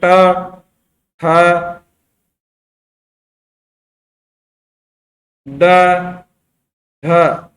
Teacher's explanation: और इसी तरह जो तीसरा है मुर्दा, इसके अंदर ट वर्ग आता है। इनको बोलते समय जीभ है जो मुर्दा वाले स्थान को टच करती है